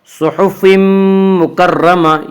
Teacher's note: یہاں تنوین کے بعد یومنو کے 4 حرفوں میں سے میم ہے، اس لیے یہاں پہ ادغام بالغنہ ہوگا۔ فی صحف مکرمہ، مکرمہ کے را کو پر پڑھیں گے۔